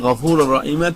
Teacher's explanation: তানবিনকে গুন্না ব্যতীত ইদগাম করিয়া পড়তে হবে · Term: ইদগামে বিলা গুন্নার